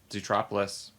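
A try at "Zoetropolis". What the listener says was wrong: Zo. No, don't say zoo.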